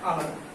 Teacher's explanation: হ ধ্বনিটি লোপ পেয়েছে এবং লোপ পাওয়ার ফলে এখানে শব্দটি পরিবর্তিত হয়ে আলাদা হয়েছে, অর্থাৎ আলাহিদা থেকে আলাদা হচ্ছে অন্তর্ভুতি।